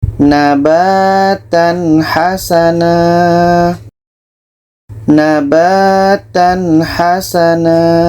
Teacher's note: Tanwin jelas, ha jelas, dan tidak ada dengung. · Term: izhar halki